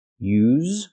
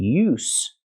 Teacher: use with a vibration is the verb and use with no vibration is the noun